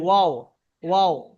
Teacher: ওয়াও এর মাখরাজ দুই ঠোঁট না মিলিয়ে উচ্চারিত হয়